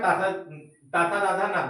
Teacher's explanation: दांत और नासिका के सहयोग से ना निकल रहा है